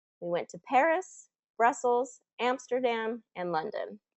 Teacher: You see how it goes up, up, up, down. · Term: list intonation